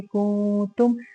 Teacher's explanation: نون ساکن کے بعد حرف تا ہے جو کہ اخفا ہوگا. یہاں پہ باریک والا اخفا کریں گے.